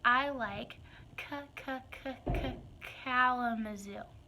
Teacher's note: sound more like this with a pull out I like Kalamazoo I've almost stretched my k sound a little bit into a prolongation but not quite um more just taking it a little more slowly in that